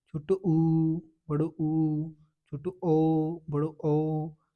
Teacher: आगे वाले होंठ है ना, वो वृत्त की तरह बन जाएंगे, मतलब गोल बन जाएंगे। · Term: व्रतमुखी